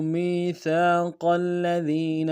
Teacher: میم کو یا کے ساتھ ملانا ہے، یا مدہ ایک انداز میں کھینچیں گے